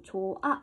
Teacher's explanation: 우리는 얘를 조흐아 라고 읽지 않고 조아 라고 히읗을 빼고 발음을 한다는 겁니다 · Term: 히읗 탈락